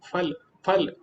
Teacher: संस्कृत या हिंदी का उच्चारण फल फल जिसमें आपके दोनों होट मिल जाएंगे